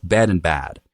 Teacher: bed in a California accent starts to sound like bad